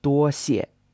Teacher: is a first tone, then a fourth tone